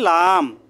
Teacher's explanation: জিহ্বার আগা সামনের উপরে দাঁতের গড়ার সাথে লাগিয়ে